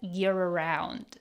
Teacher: We have the linking R sound here because gear ends in an R and around starts with a vowel.